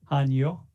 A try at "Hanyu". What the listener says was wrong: It's more like an O sound, not instead of U. Hanyu.